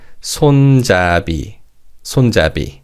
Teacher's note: Now, in terms of pronunciation, because the last syllable begins with an ian consonant, the 비읍 받침 in the second syllable carries over to the final syllable